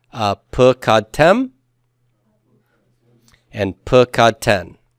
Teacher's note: So vocalic endings pull the stress back, and tem and ten pull the stress back, and that's why I have p instead of pa.